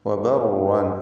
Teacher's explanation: വബർ എന്നിങ്ങനെ വിറപ്പിച്ച് കൂടുതൽ റാഇകളെ ഉച്ചരിക്കരുത് എന്നർത്ഥം. വബർവാൻ ഒറ്റ റാഇ തഫ്ഖീമോടുകൂടി ഉച്ചരിക്കുക, തടിപ്പിച്ച് സ്വരഭാരത്തോടെ ഉച്ചരിക്കുക. അതിലുള്ള തൻവീനാകട്ടെ അതിനെ ഇഖ്ലാബ് ചെയ്യണം, മീമാക്കി മാറ്റണം.